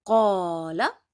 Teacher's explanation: I am only stretching the sound of qa because qa has alif in it, and before alif there is zabar.